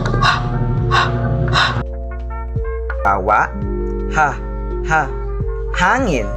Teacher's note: Ito ay mga tunog na nalilikha sa lalamunan dahil sa paghinto o paglabas ng hangin mula sa glutis. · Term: glutal